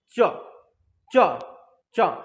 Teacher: जहां से तान रहा है जीभ जैसे च च च, तो उसी को हम लोग क्या बोलेंगे? तालु बोलेंगे।